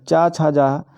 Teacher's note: चा छ जा का उच्चारण स्थान तालू से होता है